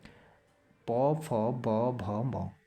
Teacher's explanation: इस वर्ण के सभी ध्वनियों का उच्चारण होठों से होता है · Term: ओष्ठ्य व्यंजन